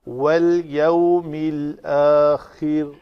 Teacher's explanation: واو کے لیے پھر شفتین گور، والیوم یو، یا زبر وا یو، واو لین ہے، والیوم الآخر، خا کی ادائیگی کے لیے یہ رگڑ کی آواز آنی چاہیے